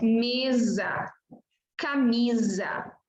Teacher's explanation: vai representar o fonema Z, como inglês ou italiano, por exemplo, quando aparecer ou quando aparece entre vogais